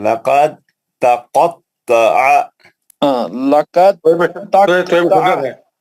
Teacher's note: हुरूफ दाल साकिन का हुरूफ ता मुशद्दद में इदगाम मुतजासिनीन हो गया है